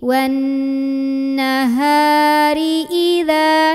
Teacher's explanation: H dari tenggorokan bawah. Bawaannya berat, bergetar tenggorokan bawah kita